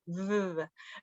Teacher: blow air and it makes no noise like like that or you like make a vibration with your throat so it makes noise